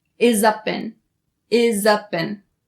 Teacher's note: we have the z sound at the end of the word is you link it to up and then the sound at the end of the word up you link it to in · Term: connecting